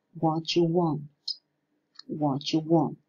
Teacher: Well, in the first phrase, we can see how the alveolar fortis plosive comes into contact with the palatal semivowel and change into a palatoalveolar affricate